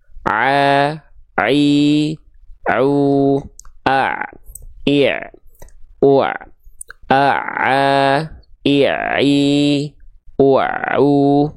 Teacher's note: huruf ain itu dilafkan tepat dari bagian tengah-tenggorokan